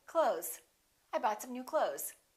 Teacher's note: same thing with the word close we don't really say clothes you might hear a tiny th with some people's pronunciation but most people just say clothes